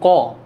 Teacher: জীভের পেছনের অংশ নরম তালুর সঙ্গে বায়ুপথের বাধা সৃষ্টি করে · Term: কণ্ঠ ধ্বনি